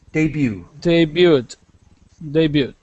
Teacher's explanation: We do not pronounce the T. It's silent.